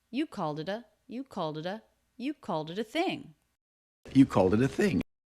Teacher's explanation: ED ending in the word called is a single D sound because the sound before was voiced.